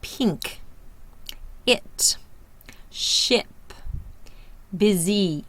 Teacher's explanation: This is the short I. Tongue is high in the front and the mouth is laxed.